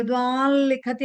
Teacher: విద్వాన్ అన్నట్టుగా పలకూడదు, బట్ ముక్కుతో పలుకుతుండాలి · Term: అనునాసిక సౌండ్